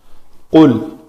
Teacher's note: قاف جو ہے اس کا مخرج ہے لوتھڑا جو لٹک رہا ہے گلے میں، کوا جسے کہتے ہیں اردو میں، وہ جب بالمقابل تالو کے ساتھ لگے تو وہ قاف ادا ہوتا ہے، اور یہ پر حرف ہے قاف، اس سے ذرا آگے کاف۔